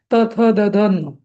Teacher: त थ द ध न तिथे दातांची मदत लागते, जीभ आपली दातांना आघात देते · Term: दंतव्य